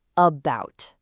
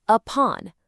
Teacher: In the word about, the stress is on bout, right? So that A at the beginning gets lazy and becomes a schwa